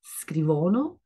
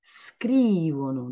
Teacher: c'est la I, une voyelle longue où il faut faire tomber l'accent